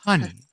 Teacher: breathy on the H